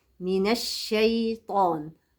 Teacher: من الشيطان، الطاء بس هي اللي مفخمة · ما يستاهلش التعظيم نرقق حروفه من الشيطان